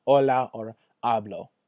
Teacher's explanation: your H is always silent no matter what you never say the H